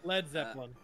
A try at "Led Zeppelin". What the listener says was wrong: Not it's Led Zeppelin. Why are you adding a B?